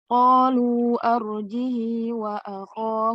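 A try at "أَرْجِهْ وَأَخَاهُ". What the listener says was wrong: Nggak panjang, sayang. Arjihinya arjihi wa akhahu. Kalau arjihi wa akhahu itu berarti dia silah.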